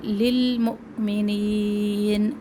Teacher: حمزہ پہ جھٹکا واضح ہو، نین یا مدہ، اور آخر میں بد عارض سکون.